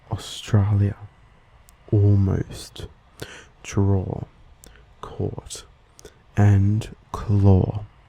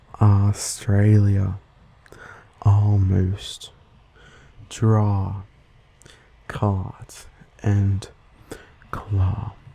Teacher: When spoken by an Australian, it becomes more like an O compared to an ah.